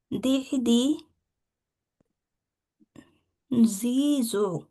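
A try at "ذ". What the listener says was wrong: হলো না তো, নরম হবে।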